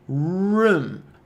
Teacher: Tua língua fica afofada lá atrás, no fundo da boca. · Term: som do R